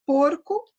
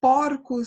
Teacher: porcos no plural é uma vogal aberta